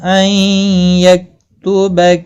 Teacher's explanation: نون ساکن کے بعد یرملون کا یا آیا ہے، ادغام باگنہ ہوگا